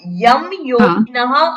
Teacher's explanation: ને ડબલ યકાર થઈ જાય હા થાય કા તો મકાર બોલાય અનુસ્વારનો નકાર તો બોલાય જ નહી